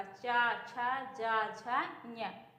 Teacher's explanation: चा वर्ग में जितने भी व्यंजन आते हैं इनका उच्चारण स्थान क्या होता है, तालु होता है।